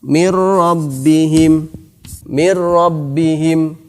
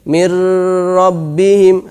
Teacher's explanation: idgham bilagunnah dimasukkan dan tanpa didengungkan